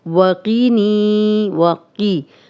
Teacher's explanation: اب واو پہ ہونٹ گول کریں گے، قوف موٹا ہے اسے موٹا ہی پڑھیں گے